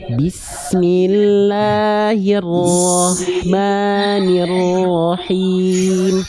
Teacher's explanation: Huruf ro punya sifat namanya adalah takrir. Takrir itu dia bergetar tapi tidak berlebihan.